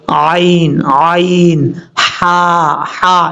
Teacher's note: یہ جو حلق ہے سینے کی طرف، اس سے اوپر جو حلق ہے یعنی گلے کے درمیان جو آتا ہے، یہاں سے عین اور ہا ادا ہوتا ہے. ایک سائڈ سے عین اور اس کے ساتھ ہی دوسری سائڈ سے ہا، یہ دونوں حروف ادا ہوتے ہیں، عین اور ہا.